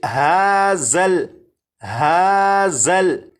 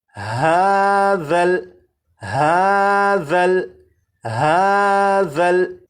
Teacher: اب اس لفظ کو پڑھیں گے، اور اس لفظ میں یہاں پر دیکھیں یہ ذال ہے، ذال کو نرمی سے پڑھیں گے، یعنی سی ٹی کی آواز کے بغیر پڑھیں گے، اور اس حرف کی سی ٹی کی آواز کو ختم کرنے کے لیے زبان کی نوک کو اوپر کے سامنے کے 2 دانتوں کے سرے سے جب لگائیں گے تو ذال کے اندر جو سی ٹی کی آواز ہوتی ہے وہ ختم ہو جائے گی۔